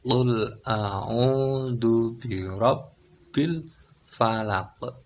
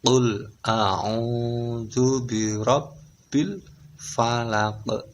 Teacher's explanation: Ada qalqalahnya di akhir. Qalqalah kubro namanya.